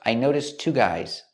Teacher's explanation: We see the T sound at the end of notice. Noticed links to the next T sound in two.